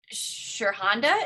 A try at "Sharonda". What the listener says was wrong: H is silent.